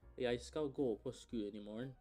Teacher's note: You'll notice that the stress syllables are drawn out, while the other ones are more compressed.